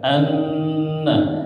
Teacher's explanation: gunnah siap nun atau mim bertasdid ya. Nah, ini gunnah ditahan juga di hidung ya. Tiga ketukan.